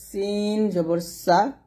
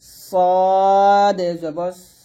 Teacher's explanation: এখানে সিন এবং সদের মধ্যে যে পার্থক্যটা এটা একটু খেয়াল করুন সিনটা হবে পাতলা আর সদ হবে মোটা